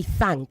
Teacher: The dental fricative th >> such that you say thank as opposed to tank.